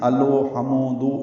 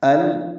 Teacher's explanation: حمزہ کو لام سے ملائیں گے، لام ساکن ہے، اس میں اظہار ہے، اظہار قمری، کیونکہ ہا حروف قمری میں سے ہے۔ لام کو واضح کر کے پڑھنا ہے، الو نہیں پڑھنا، لام پہ قلقلہ نہ ہو، لام کو ہلانا نہیں ہے، الو ہمو دو یہ غلط ہے۔